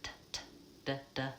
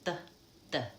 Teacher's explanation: So in American English, we make T and D at the alveolar ridge. That's basically on the top of my mouth, behind my teeth.